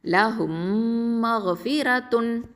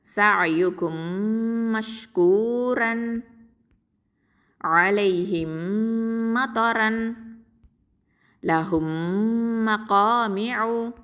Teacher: இதை உச்சரிக்கும் போது ரெண்டு உதடுகளையும் ஒன்றோட ஒன்று இணைச்சு குன்னாவோட நம்ம உச்சரிக்கணும் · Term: இதுகாம் ஷஃபவி